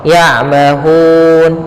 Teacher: kita panjangkan hu-nya, boleh 2 harokat, boleh 4 harokat, dan boleh pula 6 harokat. Contoh ya'mahun 2, ya'mahun 4 harokat. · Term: mad arid disukun